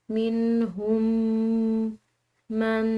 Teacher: دونوں میم کو ایک میم کی طرح پڑھا جاتا ہے